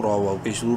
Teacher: را کو منہ بھر کے پڑھتے ہوئے ایک برابر لمبا کریں گے واو مدہ کی وجہ سے